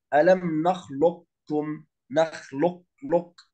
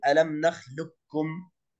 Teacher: لكن حرف القاف لن يذهب كاملا، وإنما تبقى صفة الاستعلاء في القاف